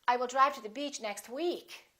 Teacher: finally if you really want to emphasize that you're saying weak you can put a little more extra stress on the word weak